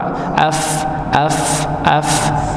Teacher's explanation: Fa ini gigi seri atas bertemu dengan bibir bagian bawah yang dalam Nggih yang dalam bukan yang luar enggak bisa kalau luar Nggih